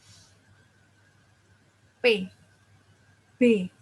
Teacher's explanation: P, B, mulut atas dan mulut bawah, bibir atas dan bibir bawah itu memiliki saling merekat. Jadi akan menghasilkan huruf P dan B.